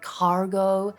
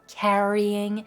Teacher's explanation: he's using that front part of his mouth, front centre part to pronounce those R sounds